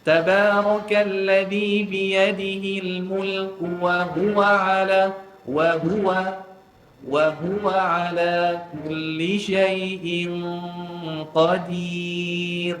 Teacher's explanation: Orang Arab bila dia baca wa huwa, dia tak kata wa huwa. Dia tekan dekat huruf ha. Kita tekan kat waw, dia tekan kat ha.